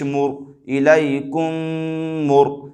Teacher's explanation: کاف میم پیش کم، الیکم، میم را پیش مر، یہاں پر رائے ساکن سے پہلے پیش ہے لہذا رائے ساکنہ کو پر کر کے پڑھیں گے